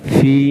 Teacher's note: Fi mad asli ya Mas ya, panjangnya 2 harokat. Jangan terlalu panjang, jangan pendek.